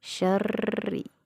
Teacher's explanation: huruf r-nya ada tanda tasdid maka kita baca ditahan syarri dan rnya dibaca tarqiq karena rnya bertanda baca kasrh alwaswasi